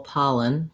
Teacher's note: Okay, so pollen, then the next syllable starts with a light L. So even though the L is in the middle of this syllable, pollen, we start a syllable with it, so we can use just the normal light L.